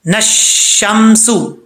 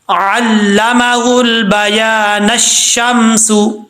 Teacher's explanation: اگر آپ وقف نہیں کرنا چاہتے تو پھر نون کو، نون کے اوپر زبر ہے تو نون کو پھر ہم یہ اگلی آیت کے ساتھ ملا کے پڑھیں گے، یہ دیکھیں یہ ہے، یہاں پر حمزہ بھی گر جائے گا، لام بھی گرا دیں گے، نون کو ڈائریکٹ شین سے ملائیں گے